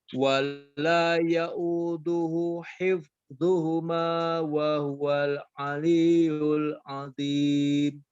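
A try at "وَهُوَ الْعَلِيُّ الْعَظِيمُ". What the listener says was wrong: Nah, pada kata aliyu Iya-nya ditekan sempurna dengan kuat, ya. Wa huwal aliyyul azim. Wa huwal aliyyul azim. Coba aliyyu ditekan sempurna. Aliyyul azim. Wa huwal aliyyul azim. Azim. Azim.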